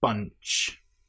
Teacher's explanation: We have the nasal sound followed by the ch bunch.